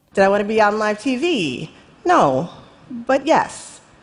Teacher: There is more tension there. How do we know that? Cuz she goes a little higher for live TV.